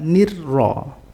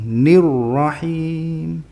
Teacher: Ro yang di fathah itu yang menang, sehingga dari awal sudah langsung tafkhim. Hir, bukan hirro, bukan.